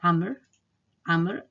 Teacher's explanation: the waw is totally silent